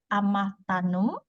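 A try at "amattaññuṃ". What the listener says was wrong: Amatanyum. Nyum. Not no. No. You see this mark? Nyum.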